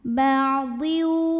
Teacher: Kalau kita meneruskan bacaan ba'dhiu maka di sini ada hukum idgham bi gunnah karena ada tanwin kasrah yang bertemu dengan huruf waw. Maka tanwin kasrahnya masuk ke waw, ba'dhiu dan dengungkan, tahan. Ba'dhiu. Dan untuk huruf waw ini secara praktek idghamnya ini adalah idgham bi gunnah yang nakis.